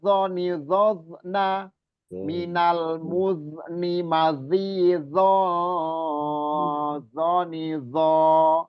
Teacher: Ini fathah tain. Fathah tain zo itu ketemu zo lagi itu hukumnya ikhfa. Jadi disamarkan dan ditahan 2 harokat.